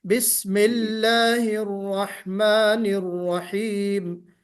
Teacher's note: लाम को मोटा नहीं पढ़ना है, बारीक पढ़ना है।